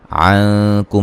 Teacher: नून साकिन का बारीक इख्फा है।